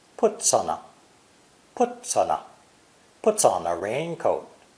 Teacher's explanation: The 3 words puts on a are linked together fluently.